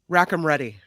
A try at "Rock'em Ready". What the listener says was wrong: I'm guessing it's Rock'em Ready, not Rack'em Ready. Rack'em Ready sounds like something you say in a pool hall. I guess it's Rock'em Ready.